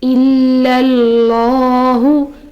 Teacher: تو یہاں اس میں جلالہ سے پہلے زبر آ رہی ہے، اس کی وجہ سے ہم اس میں جلالہ کو موٹا پڑھیں گے